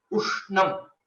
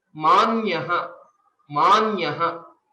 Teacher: If you notice it, there is a subtle extension of the previous letter, or you can think it as a small pause is there, so that the stress is given onto the Samyukta Akshara.